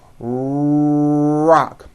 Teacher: right now so for example in the word Rock notice how my lips are coming forward and my tongue moves back in my mouth and I push out the r sound